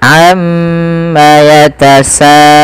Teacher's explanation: kita harus memanjangkan bunyi sa sepanjang 4 atau 5 harokat dan tidak boleh dikurangi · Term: mad wajib muttasil